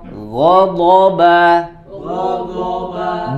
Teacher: b-nya tipis jangan terpengaruh menjadi tebal karena dua huruf sebelumnya tebal